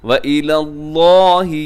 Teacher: وَإِلَى اللَّهِ، یہاں بھی اللہ کا جو نام ہے اسے آپ موٹا پڑھیے گا